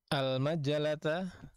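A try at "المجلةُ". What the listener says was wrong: Kaifa taqra'ul majalata bil fathah? Majalata. Al-majalatu.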